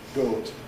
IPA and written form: goːt (goat)